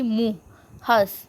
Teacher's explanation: अनुनासिक, जिसका उच्चारण नाक और मुंह दोनों से होता है, जैसे कि मुंह, हंस, इनमें चंद्र बिंदु भी होता है, जैसे चंद्र बिंदु जहाँ पे वो अनुनासिक है।